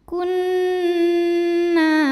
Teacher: Lalu berikutnya ada hukum gunnah musyaddadah. Karena nun bertasydid, maka cara bacanya dengung, jadi bunyi n tahan.